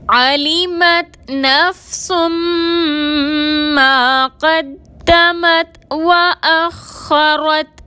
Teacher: نفسن میں سین کے اوپر 2 پیش کی تنوین ہے اور اس کے بعد حروف یومن میں سے میم آ رہا ہے، مشدد کر کے غنہ کے ساتھ ادا کریں گے، میم کے ساتھ الف مدہ ہے، 2 حرکت کے برابر کھینچ کر پڑھیں گے۔